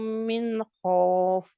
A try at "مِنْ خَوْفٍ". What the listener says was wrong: من خوف, یہ لین کا قاعدہ جو ہے نا اس کو گول کرے. خوف ہے، اس کو خوف نہیں پڑھنا. خوف ہم اردو میں بولتے ہیں، عربی میں خوف نہیں ہے.